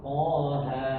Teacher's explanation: Jadi kadar panjangnya itu dua harakat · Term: mad thabi'i harfi